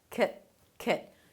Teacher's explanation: And then you close it with 'k't' - "k't" "k't". It's a 'k' sound, a schwa, a reduced vowel, and a held T